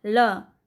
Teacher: ल बोलते वक्त मसूड़े पे टच कर रहा है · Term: वत्स्य व्यंजन